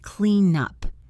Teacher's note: The N sound connects to the U sound. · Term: linking